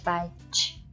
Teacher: the sound indicated in English batch is actually a stop followed by a fricative